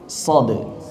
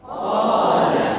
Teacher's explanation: Maka suaranya tebal, lebih tebal daripada isti'la yang infitah. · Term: itbaq